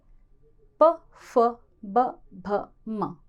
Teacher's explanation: होठ बार बार टच होते हैं, आपस में एक दूसरे को स्पर्श करते हैं। तो वे वर्ण जिनके बोले जाने के समय हमारे होठ ही ज़्यादा से ज़्यादा प्रयोग आते हैं, श्वास वायु होठों के माध्यम से कंपन उत्पन्न करती है, वर्ण बोले जाते हैं, वे हैं ओष्ठ।